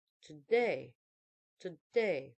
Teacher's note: unstress syllable followed by a stress syllable